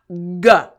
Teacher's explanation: the back of my tongue is hitting the roof of my mouth right before the throat starts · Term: G sound